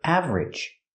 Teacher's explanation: We don't make it 3 syllables. We make it 2 syllables.